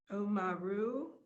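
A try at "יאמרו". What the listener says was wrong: Yomiru. Yeah, don't forget the yud.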